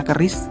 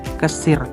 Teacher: kata keris terkadang diucapkan sebagai kesir, di mana posisi konsonan R dan S bergeser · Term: perubahan bunyi